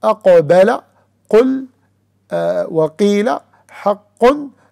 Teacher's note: it comes out from the deepest part of the tongue with what lays opposite to it of the roof of the mouth, the soft palate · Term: letter qaf